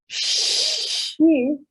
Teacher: blade of my tongue against that area between the palatal and alveolar region